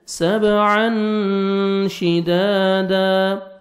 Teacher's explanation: تنوین کے بعد حروف اخفاء میں سے شین ہے، آپ نے نوز میں ساؤنڈ لے کے جانا ہے